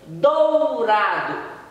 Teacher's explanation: Esse O soou mais forte no som do. O U ficou apenas é um apoio para ele, é uma semivogal que nós chamamos assim, quando apoia a vogal.